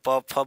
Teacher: ओष्ठ में प फ ब ब आएगा, जिसमें प फ बोलोगे तो ओठ का जो है प्रयोग होगा, ओठों के यहाँ से हवा देखो फंस के निकलेगी